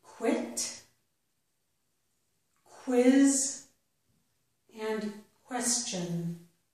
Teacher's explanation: when Q is followed by U at the beginning of a word, it usually makes qu, the k plus the w sound